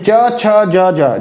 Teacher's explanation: जीभ का ऊपर पोर्शन तालु से टच करके ये वर्ड हमारा प्रोनाउंस होता है